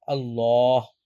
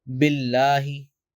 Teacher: Sometimes we pronounce it with a fuller sound, Allah, and sometimes we pronounce it with a lighter way, Billahi. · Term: tafkhim